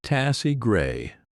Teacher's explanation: taste great softens at the end, almost like tassy gray, with those T sounds gently cut off